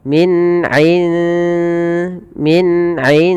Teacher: Maka teman-teman apabila kita mendapati dalam bacaan kita ada huruf nun sukun bertemu dengan dal, maka cara membacanya samarkan nunnya kepada huruf dal dan dia dibunyikan seakan-akan terdengar ada eng ya tapi dia tidak eng tapi dia menyamarkan langsung kepada makhrajnya. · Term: ikhfanya tipis